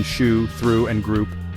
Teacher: U as in goose is long, high, back, and rounded.